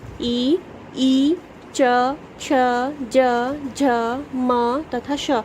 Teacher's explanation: इन वर्णों का उच्चारण करने में आपकी जीभ तालव्य से टकराती है